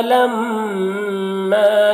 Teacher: میم مشدد ہے تو اسے غنہ کریں گے